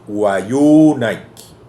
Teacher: la primera sílaba es liviana, wa, entonces la tónica sería yu.